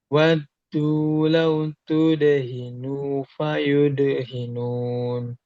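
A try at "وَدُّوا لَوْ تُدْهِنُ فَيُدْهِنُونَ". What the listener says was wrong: Nah nunnya pendek tudehinu fayu dehinun.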